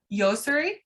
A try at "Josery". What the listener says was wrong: Josery. It's pronounced with a J.